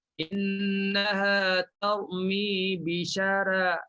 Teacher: Bila baris bawah memang dia tipis. Yang nak dibincangnya ra yang pertama, ra baris atas. Maka di sini bagi Warash dia kena tipis. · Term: tarqiq ra